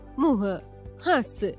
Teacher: इसका उच्चारण नाक और मुह से होता है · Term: अनुनासिक